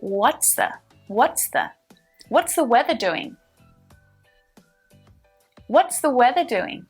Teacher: notice that i'm contracting and linking what's the what is the into what's the